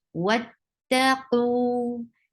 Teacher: واتقوا, for wow, circle your lips. The makhraj of wow, the articulation point of wow is circling your lips. For fatha, open your jaws and then attach with ta.